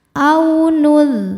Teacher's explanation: ada harfulin sebab ada waw sukun sebelumnya baris fathah, cara bacanya lembut atau lunak. Aunul. Nah ini sama kayak membunyikan yang ul.